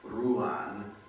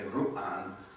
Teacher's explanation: You've got to put a glottal stop between them, so you can't have a word like ruan.